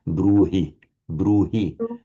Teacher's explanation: So of course in French you wouldn't do it but we have an h here in between two vowels. It is very distinctly pronounced as a bruhi bruhi. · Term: full h value